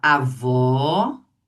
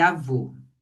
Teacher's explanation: o som do circunflexo, ele é grosso porque ele é fechado, então ele é masculino. · o agudo ele marca o som aberto e o circunflexo marca o som fechado